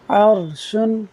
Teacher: را ساکن سے پہلے زبر ہے تو پر پڑھتے ہیں۔